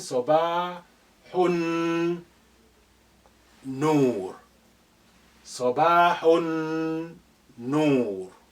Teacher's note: Lam is silent here because noon is your sun letter. It's carrying shadda. So therefore, the sukun on lam of al has been removed.